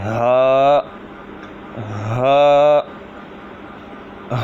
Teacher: ہا جو ہے حلق کے نیچے والے حصے سے ادا ہوتا ہے